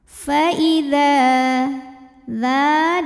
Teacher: maka huruf Dal kita panjangkan dua harakat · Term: Mad Thobi'i